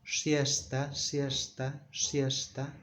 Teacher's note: In Spain, they pronounce it in a sort of a whistle